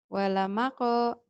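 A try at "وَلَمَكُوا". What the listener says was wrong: Nggak ada yang panjang. Walamako, walamako, walamako. Karena kalau walamako berarti ada madnya ya. Ada pemanjang. Di sini nggak ada pemanjang satupun. Walamako yang ini.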